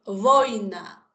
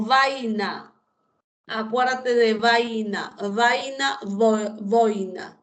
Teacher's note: la fuerza de voz, el acento está en la vocal abierta.